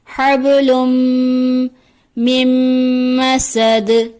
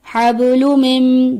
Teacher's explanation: یہاں پر جو عموماً مسٹیک ہوتی ہے لام کے اوپر دو پیش کی جگہ ایک پیش کی ادائیگی ہو جاتی ہے جو کہ درست ادائیگی نہیں. اس کو پڑھ دیا جاتا ہے حبل من جو درست ادائیگی نہیں.